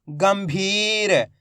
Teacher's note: अपन ने आधा मा का उच्चारण करा है अधिकतर लोगों ने क्या गलती करी आधा ना का उच्चारण कर दिया